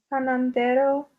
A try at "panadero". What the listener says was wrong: Panadero without n. Panadero.